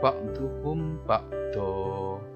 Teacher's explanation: Do tanwin, fathah tanwin ketemu alif berdiri dan itu berhenti, ada tanda waqaf, maka itu disebut dengan mad iwad. Jadi fathah tanwin itu nanti menjadi fathah biasa tapi panjangnya 2 harokat. Awalnya ba'don menjadi ba'do, ba'dukum ba'do, seperti itu, disebut dengan mad iwad.